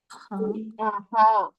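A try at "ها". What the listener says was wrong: ഹാ എന്താണ്? നീട്ടണം. ഹാ. അഥവാ ഇത് കിതാബുഹ അവളുടെ ബുക്ക്, കലമുഹ അവളുടെ പെന്ന്, പിന്നെന്താണ്? ബൈത്തുഹ അവളുടെ വീട്. നീട്ടണം.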